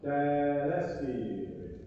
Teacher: Try not to go to the L sound like del espiri. Just keep the vowel open.